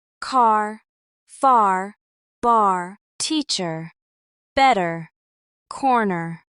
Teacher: Americans pronounce R strongly and clearly. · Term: relaxed R sound